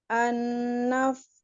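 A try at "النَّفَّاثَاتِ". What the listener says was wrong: Kenapa berubah hurufnya? Masih harus latihan lagi huruf fa-nya kurang hams, kurang rokoah. Ya tadi ya, namanya kurang ta'afuf gitu ya. Jadi fa, itu ya sifat-sifat itu. Jadi dan harus terdengar suaranya.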